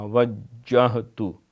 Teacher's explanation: وجہ ہاں جو ہے یہ پیٹ سے جا کے نکلتی ہے